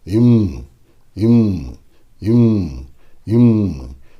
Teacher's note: உதடுகளை மூடி காற்றை வெளியிட வேண்டும். இந்த முறை காற்று மூக்கிலிருந்து வர வேண்டும்.